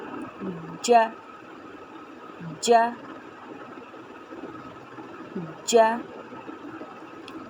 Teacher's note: سب سے پہلا مخرج ہے جیم کا یعنی ج۔ زبان کے بیچ کا حصہ اوپر کے تالو سے لگائیے اور کہیے ج، ج، ج۔